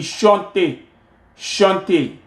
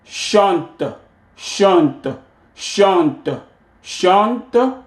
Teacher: Alors, on ne prononce pas E à la fin du mot.